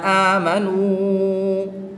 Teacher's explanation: یہاں پر واو ساکن سے پہلے پیش ہے تو اس کو لمبا کریں گے، 1 الف یعنی 2 حرکات کے برابر کھینچ کے پڑھیں گے